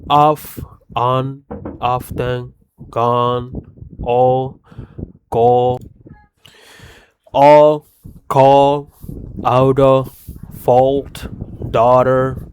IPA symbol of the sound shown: ɔ